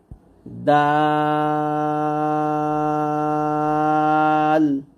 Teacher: জিহ্বার আগা সামনের উপরে 2 দাঁতের গোড়ার সঙ্গে লাগে দালটা আমরা নরম ভাবে উচ্চারণ করবো